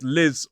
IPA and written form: lɪz (Liz)